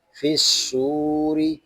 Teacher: ہم صاد کو ایک الف تک کھینچ کر بھی پڑھیں گے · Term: واو مدہ